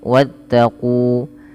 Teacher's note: Pada lafal qu ada bacaan berupa mat tabi'i, yang dimana kunya dipanjangkan 2 harakat, dan alif bila ditandai dengan sifar mustadir di atasnya maka alifnya dianggap tidak dibaca, dan maka diwarnai dalam mushaf ini yaitu diwarnai dengan abu-abu, artinya dianggap tidak dibaca.